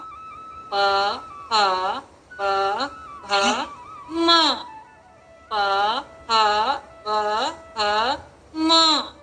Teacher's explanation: हमारे दोनों ओठ मिलते हैं तब ये शब्द बोले जाते हैं। प फ ब भ म, इनको नाम दिए ओष्ठ।